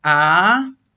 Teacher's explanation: the second tone is a rising tone